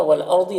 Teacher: را ساکنہ سے پہلے الف کے اوپر زبر ہے را کو پر پڑھیں گے